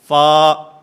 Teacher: ان ثنایا علیہ کے کنارے جس وقت نیچے والے ہونٹ کے اندرونی حصے سے ٹکراتے ہیں تو اس سے فا ادا ہوتا ہے